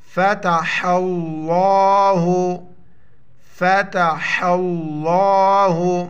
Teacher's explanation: حا کے اوپر جو ہے نا زبر ہے تو لفظ اللہ کو موٹا پڑھیں گے